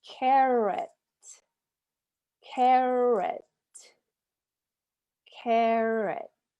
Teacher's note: carrot is our carrot carrot carrot it's actually er or carrot even though we write it with an a it's an er sound